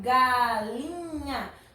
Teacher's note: a penúltima sílaba é pronunciada com mais força com mais intensidade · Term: paroxítona